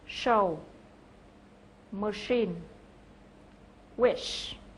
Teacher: phụ âm này là một phụ âm không kêu, voiceless consonant, và âm được tạo ra giữa mặt lưỡi trước và vòm miệng và là một âm sát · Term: phụ âm sh